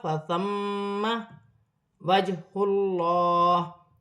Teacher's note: اللہ کی لام سے پہلے پیش آ رہی ہے، اللہ کی لام موٹی پڑی جائے گی